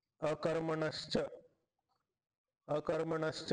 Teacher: अकर्मणः शब्द होता विसर्गाला श झाला च पुढे असतो ठीक आहे आता हा शच का झाला कारण की च मध्ये · तर च आपण तालूपासून बोलतो तालू कुठे आहे दाताच्या वरती असा शण अर्धा टाळू टाळू पासून